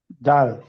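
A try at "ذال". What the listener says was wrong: জাল বলা যাবে না। জাল তো তিন আলিফ টেনে পড়তে হবে। জাল। তিন আলিফ টেনে পড়তে হবে। জাল জিব্বার আগা তিনটা হরফের মাখরাজ এক। ল, জাল, সা। এই তিনটার মাখরাজ একই। তাহলে জাল হচ্ছে জিব্বার আগা সামনের উপরে দুই দাঁতের আগার সাথে লাগবে, তিন আলিফ টেনে পড়তে হবে। তিন আলিফ।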